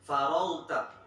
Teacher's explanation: Pas faragta-nya jangan dikolkolah ya. Faragta, ketahan, faragta.